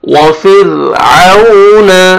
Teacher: را ساکن ہے، را ساکن سے پہلے کسرہ، را کو باریک کر کے پڑھیں گے۔